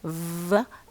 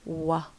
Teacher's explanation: Try to pronounce the fricative sound v and then the approximate sound wa